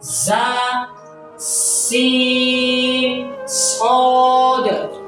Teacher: زا سین صاد ادا ہوتے ہیں زبان کی نوک نیچے والے سامنے والے 2 دانتوں کے پیچھے لگنے سے اور معمولی سا اوپر والے دانتوں کے لگنے سے. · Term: سیٹی والے حروف